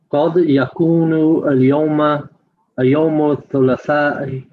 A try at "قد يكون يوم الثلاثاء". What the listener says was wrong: Not اليوم, but just يوم. الثلاثاء. Okay, قد يكون يوم الثلاثاء.